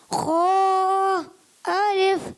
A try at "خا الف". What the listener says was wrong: اچھا بہت زیادہ خا ایسے نہیں کرنا.